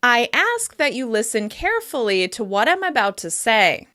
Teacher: In this case, I'm emphasizing the verb ask, and I'm also drawing attention to the adverb carefully.